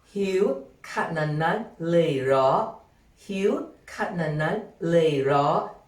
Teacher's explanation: rising tone raw at the end when seeking confirmation to your question